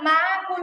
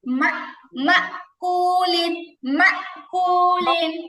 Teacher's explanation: মা হামজার মধ্যে জজম হলে হালকা একটু কেমন ধরো ধাক্কার মতো উচ্চারণ হয়